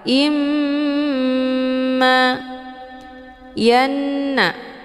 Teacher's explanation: hamzahnya dileburkan ataupun dimasukkan ke dalam huruf mim dengan cara ditekan kemudian ditahan lebih kurang dua kali ketukan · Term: ghunah musyaddadah